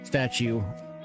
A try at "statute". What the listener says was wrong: Not statue. Yeah, there's 2 T's.